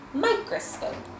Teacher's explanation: if you pronounce it really hard and really slowly, then you're going to hear that as a long O sound